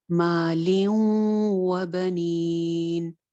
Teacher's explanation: واؤ کے ساتھ ادغام ہے، ناقص ادغام ہے، یعنی کہ نون کی آواز باقی رہے گی